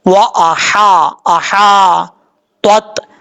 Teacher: ता हुरूफ मुस्ताले में से पुर पढ़ा जाएगा, हा ब्रीक है, इसको क्लियर साउंड पढ़ेंगे, वा आ हा, आहा तोत।